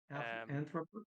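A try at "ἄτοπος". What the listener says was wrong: No, not anthro. Atro.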